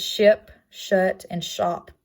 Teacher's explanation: The next fricative is this like elongated S, which stands for the sh sound, alveolo-palatal, and it is not voiced, and it shows up in words such as ship, shut, and shop, all making the sh sound, and that is the symbol for it, like elongated S.